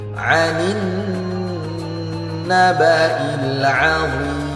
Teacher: nun yang bertasydid harus kita dengungkan 2 harokat. Hukumnya disebut gunnah.